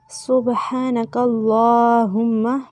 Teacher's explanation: سبحانک اللہم، با پہ قلقلہ کریں گے، کاف کو لام کے ساتھ ملانا ہے اور اللہم کا لام موٹا پڑھیں گے، اس میں جلالہ کے لام سے پہلے زبر ہے۔